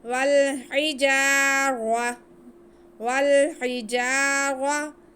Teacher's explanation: را پہ زبر ہے تو یہ موٹا پڑا جائے گا